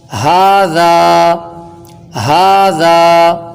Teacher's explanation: ہا یہ ہدایت والی ہے، یہ بالکل حلق کے نیچے والے حصے سے ادا ہوگی جو ابتدائی حصہ ہے، اور ذال یہ زبان کا سرا اور اوپر کے دانتوں کے اندرونی کناروں سے نرمی کے ساتھ باریکی سے ادا ہوگی۔